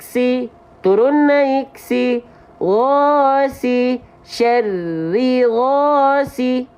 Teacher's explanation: Oke, jadi kalau teman-teman menemukan 3 kondisi ini, fathah alif, dhammah waw sukun, kasroh ya sukun, maka dibaca dengan kadar panjang 2 harokat. Cara melafalkan 2 harokat buat teman-teman yang baru belajar, ayunkan 1 kali turun dan naik.